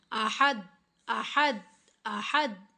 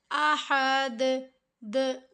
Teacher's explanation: हा को दाल के साथ मिलाते हुए हमने कलकला करना है, यानी कि इस दाल को हमने हिला कर पढ़ना है